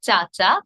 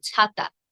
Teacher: চ অল্প প্রাণ, ছ মহাপ্রাণ। চ যখন আমরা উচ্চারণ করব তখন আমরা কম জোর দিয়ে উচ্চারণ করব, ছ যখন আমরা উচ্চারণ করব তখন বেশি জোর দিয়ে উচ্চারণ করব।